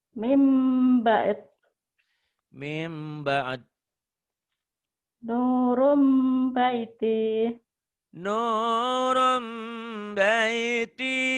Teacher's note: Bunyi nun mati itu kan bunyinya N. Berubah menjadi M, tapi bindeng. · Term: iklab